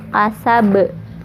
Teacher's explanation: kasab ini qalqalah kubro atau qalqalah besar, pantulannya besar ya karena huruf qalqalahnya ada di ujung, ada di akhir ayat